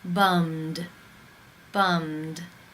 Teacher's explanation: The final sound in the infinitive is the M consonant sound. It is voiced. Therefore, it is case 2, and the ED is pronounced as the D.